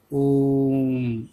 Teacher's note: इस ओम का उच्चारण हम 3 मात्राओं के समय जितना करेंगे और लंबा करेंगे, ओम ऐसे बोलेंगे। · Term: प्लुत स्वर